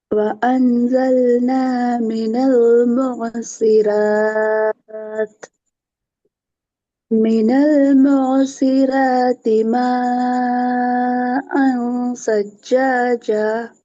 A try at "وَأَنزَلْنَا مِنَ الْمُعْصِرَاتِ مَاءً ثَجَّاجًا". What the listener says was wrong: சஜ்ஜா அந்த ஜா என்கிறது பிழை. ஏன் பிழை? இந்த இடத்துல நாங்க நீட்டி நிப்பாட்டினா தான் எங்களோட ஓதல் ராகமான அமைப்புல வந்து நிற்கும். சஜ்ஜாஜ அந்த அமைப்புக்கு நான் போகணும்.